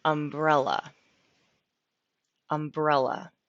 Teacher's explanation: umbrella with the accent on the e